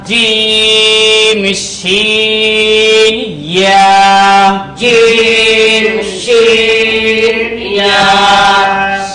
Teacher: জিহ্বার মধ্যখান, তার বরাবর উপরের তালুর সঙ্গে লাগাইয়া